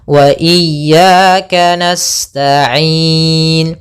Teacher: ada mad thabi'i yaitu fathah bertemu alif panjangnya dua harakat